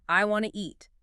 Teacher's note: The T sound at the end of want basically disappears or blends into a quick new sound.